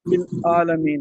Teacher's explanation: عین کی جگہ بعض لوگ حمزہ پڑھ جاتے ہیں